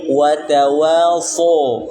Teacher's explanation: ketika setelah menyebutkan wa, pangkal lidahnya naik